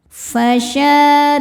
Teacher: huruf ra dibaca secara tarqiq karena harokatnya di bawah kasrah. Cara bacanya ra ditipiskan. Fasyaribuna, bu hukumnya mad tabi'i dhahiri, sebab ada waw sukun sebelumnya dhammah.